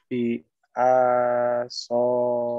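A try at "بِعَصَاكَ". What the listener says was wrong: A-nya pendek. Kalau pendek dibacanya terus. Bi-a-so. Jangan bi-a-so. Tapi dibaca bi-a-so. Satu harokat.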